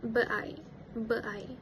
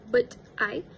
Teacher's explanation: the t in the word but was dropped